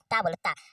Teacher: जब तक ये टच नहीं होगा जीभ आपका दांत में तब तक उच्चारण ही नहीं होगा, ठीक है। ता बोलो ता, ता बोलोगे तो आपका जब भी ता बोलोगे ना तो आपका जो जीवा है वो आपका दांत में टच कर रहा होगा।